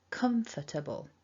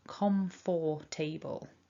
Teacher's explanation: it's not an or it's an uh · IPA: /ə/